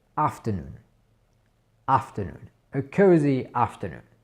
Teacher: je dirais plus qu'on utilise l'accentuation sur la première syllabe, le A, et le reste, c'est un petit peu plus mis sous silence entre guillemets.